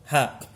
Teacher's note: ini keluarnya bersamaan antara suara dan udara